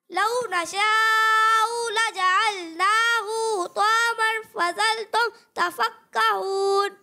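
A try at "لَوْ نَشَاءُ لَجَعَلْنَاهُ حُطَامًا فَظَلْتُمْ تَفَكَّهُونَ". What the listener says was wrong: अच्छी कोशिश की आपने, लेकिन बेटा यहाँ पर आप देखें हमजा पर पेश है। इसे बगैर खींचे, बगैर झटका दिए पढ़ना है। आप इसे एक अलिफ के बराबर खींच रहे हो, ठीक है? तो इस तरह नहीं करना। दूसरी बात ये कि यहाँ हा लिखा हुआ है और यहाँ लिखा हुआ है हा, ठीक है?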